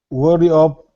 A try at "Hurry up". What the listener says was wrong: And just, hurry up. It sounded like you said worry up. Hurry. Her. Sounds like the pronoun her. Like her makeup is running. Her Hurry up.